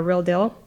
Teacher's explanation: front vowels that were over on the front part of the vowel space e and eh becoming both kind of il like before L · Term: prelateral mergers